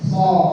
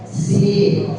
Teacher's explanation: ketika sod terangkat pangkal lidah ketika si maka lidah kita lurus